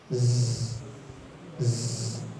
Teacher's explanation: suara dan nafas yang keluar antara ujung gigi seri atas dan ujung gigi seri bawah jadi ketika ditempelkan ada suara dan nafas yang keluar z z